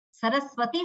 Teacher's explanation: સ બોલીએ ત્યારે આપણી જીભ દાંતને અડે તો જ એ સ્પષ્ટ રીતે સકાર થાય. એ સરસ્વતીનો સ, સરસ્વતી શબ્દ બોલીએ આપણે તો એ દંત્ય સ હોવો જોઈએ.